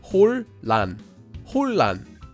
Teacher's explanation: Whenever you have a nian before a lil, or a lil before a nian, the nian will become pronounced like a lil.